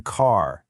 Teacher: For American, it's that hard R sound like in car.